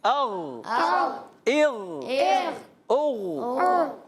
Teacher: غین میں کلکلا نہیں کریں گے، آواز جاری ہوگی، سانس جاری نہیں ہوگا، سانس بند ہو جاتا ہے